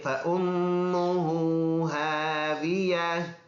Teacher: فَأُمُّهُ یہ حمزہ ہے، الف نہیں ہے، اور میم مشدد ہونے کی وجہ سے اس میں غنہ ہوگا. ہو کو بھی ایک الف کے مقدار لمبا ادا کر کے پڑھیں گے.